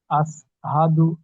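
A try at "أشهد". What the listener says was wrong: দেখেন এখানে আপনি বললেন আশহাদু, সিন দিয়ে উচ্চারণ করছেন, তাই না ভাই? কিন্তু এখানে দেখেন তিন নক্তালা শিন আছে মোটা আওয়াজে, আশহাদু। ওটা আপনার সিন আসছে, চেষ্টা করবেন ওটা শিন করে নেওয়ার জন্য, মোটা আওয়াজে শিন।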